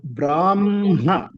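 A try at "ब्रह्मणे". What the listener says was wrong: also should be heard. That hakara is missing in your recitation. Can you please try again?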